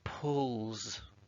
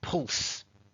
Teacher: the s letter we say it like it's a z z sound